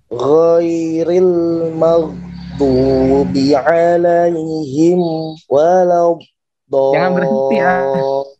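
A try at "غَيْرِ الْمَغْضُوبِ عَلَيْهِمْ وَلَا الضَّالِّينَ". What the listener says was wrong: Jangan berhenti ya. Alaihim walad, jangan berhenti ya. Alirkan dengan gunah mim sedikit, ngalir langsung sama temponya. ghairil maghdubi alaihim waladdallin.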